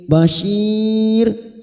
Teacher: bashir ini kita baca tarkik atau tipis karena ada ya sukun yang sebelumnya juga kasroh, maka kita baca tipis dengan posisi bibir meringis